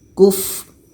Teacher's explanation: Jadi fa yang berbunyi angin ini mesti jelas. Kuf. Ada anginnya. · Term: hamas